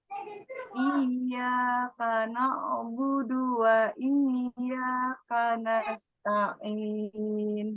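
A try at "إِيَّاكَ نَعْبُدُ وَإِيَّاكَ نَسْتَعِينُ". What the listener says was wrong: Nah, di sini karena budu, nah, ain sukun dengan dalnya perlu diperbaiki. ujung lidah ke gusi. Ujung lidah ke gusi, bukan ke langit-langit. iya, kalau budu kan dia ke langit-langit.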